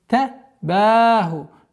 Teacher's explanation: Долгота в размере 2 огласовок фатха над буквой ба.